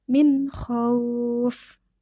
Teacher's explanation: ada nun mati bertemu dengan huruf kho. Maka huruf nun matinya dibaca dengan jelas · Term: idhar